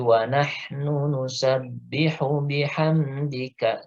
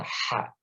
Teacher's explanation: ha itu ada di tenggorokan tengah ya, ha. Jadi dia lebih halus daripada ha di tenggorokan bawah ya. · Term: makhraj ha